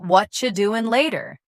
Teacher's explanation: Notice how the t sound softens or disappears.